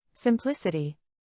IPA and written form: sɪmˈplɪs.ɪ.ti (Simplicity)